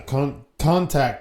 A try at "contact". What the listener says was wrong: Contact. You have the emphasis on the wrong syllable.